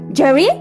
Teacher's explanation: I am using rising intonation, but it is not at a very high pitch.